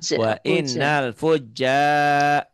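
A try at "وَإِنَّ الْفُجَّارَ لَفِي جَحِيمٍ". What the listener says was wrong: Jimnya belum keras tuh.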